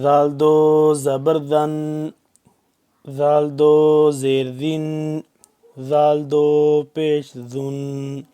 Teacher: یہ ذال کو بھی نرمی سے پڑھنا ہے، زبان کو دانتوں کے درمیان لائیں گے، تھوڑی سی باہر نکالیں گے